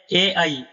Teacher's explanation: ए आई का उच्चारण स्थान कंठ और तालव्य से होता है। कंठ और तालु दोनों स्थानों से होता है। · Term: कंठ तालु